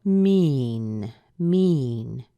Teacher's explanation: that it is a wh question so whenever we have that we're going to hear a rise on our final important word and then a pretty severe drop · we're going to hear a rise on our final important word and then a pretty severe drop. And so this is a really short question, so it's pretty easy to figure out that our most important word is this word mean.